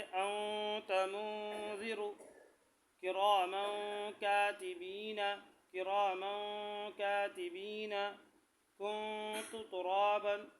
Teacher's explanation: اخفاء ہوگا مع غنہ۔ اخفاء بھی کریں گے یعنی ناک میں آواز کو چھپائیں گے، ساتھ گنگنائیں گے بھی۔